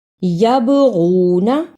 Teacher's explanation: یبغون یا زبر با یب با جزم کی صورت میں حرف قلقلہ ہے، یعنی اس حرف کو ہلا کر پڑھنا ہے